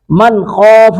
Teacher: من نون ساکن کے بعد خا ہے، اظہار کریں گے یہاں پہ